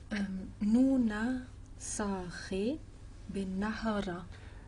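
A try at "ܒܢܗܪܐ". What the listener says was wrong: C'est pas benahra, c'est bnahra. Absolument.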